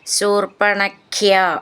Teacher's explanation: ഖ്യ എന്നുള്ള അക്ഷരം നന്നായിട്ട് ഊന്നി പറയണം